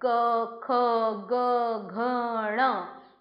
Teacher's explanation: इसका उच्चारण स्थान कंठ है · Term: कवर्ग